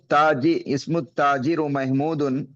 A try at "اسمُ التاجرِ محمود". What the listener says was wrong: اسم التاجری پڑھیں گے، مضاف مضاف الیہ کے بارے میں ہم نے بتایا تھا۔